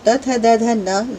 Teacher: त थ द ध न, ये वर्ण है वो दांतों की मदद से बोले जाते हैं। आप यदि इन्हें बोल के देखेंगे तो त थ द ध न इन सभी के को उच्चारित करने में आपकी जीभ दांतों के पिछले भाग का स्पर्श करती है। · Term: दंत्य वर्ण